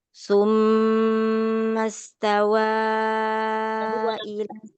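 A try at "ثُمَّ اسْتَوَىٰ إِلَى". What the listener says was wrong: Tawa, kalau tawa tanya enggak tambahkan harokat, bukan tawa, tidak. Tawa, tawa, taknya nampak harokatnya, tidak melemah. Mastawa, coba.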